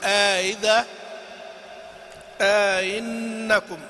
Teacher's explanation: يقرأ قالون وأبو عمرو وأبو جعفر بالإدخال، تسهيل مع الإدخال